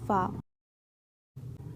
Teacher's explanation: निचले होंठ के भीतरी भाग से लेकर ऊपरी सामने के दांतों के किनारों तक, एक अक्षर उत्पन्न होता है। और वह है फा।